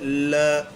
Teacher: जब इस वर्ण का उच्चारण करते हैं ल का तो जीभ के बगल से वायु गुजर जाती है बगल पार्श्विक का मतलब ही यही होता है पार्श्वी यानी बगल · ल का उच्चारण करते हैं तब बोल के देखिए, ल। ऐसा लगता है जैसे वायु जीभ के साइड से होकर के गुजर गई हो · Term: पार्श्विक व्यंजन